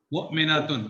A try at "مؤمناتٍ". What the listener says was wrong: مؤمناتن اگر آپ کرتے ہیں نا تو نون کے بعد فتح سے زیادہ الف آپ کا ساؤنڈ نظر آتا ہے. مؤمنات،